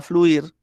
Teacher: digo esa palabra, digamos un poco rápido, la palabra fluir, yo la puedo tomar también como un monosílabo. Y como un monosílabo, es decir, que sea solo una sílaba esa palabra, ¿bien? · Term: diptongo